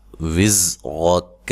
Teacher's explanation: وِزْرَكَ، زا کو زور سے ادا کرنا ہے، سیٹی سے ادا کرنا ہے، ٹھیک ہے۔ را کو موٹا ادا کرنا ہے اور کاف کو ساکن کر دینا ہے۔